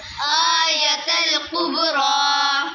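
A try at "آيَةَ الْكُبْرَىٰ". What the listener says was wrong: बेटे काफ और क़ाफ दोनों मुख्तलिफ हैं। कुब्रा नहीं है, कुब्रा।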